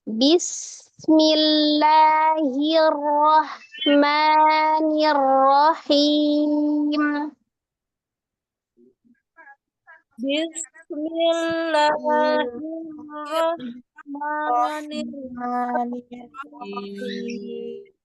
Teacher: alif lam yang melekat pada lafaz Allah, lafaz jalalannya karena sebelumnya kasrah dia tipis, tapi jangan dihilangkan sifat tawassut di huruf lamnya.